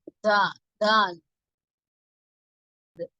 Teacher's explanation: நாவின் நுனி பகுதி மேல் நடு பற்களின் வேரை அழுத்தமாக தொட்டி விலகும் போது உண்டாகிறது.